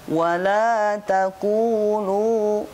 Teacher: Wala taqulu sama semuanya mad tabi'i, dibaca 2 harokat.